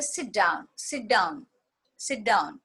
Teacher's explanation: The t in sit is almost not heard.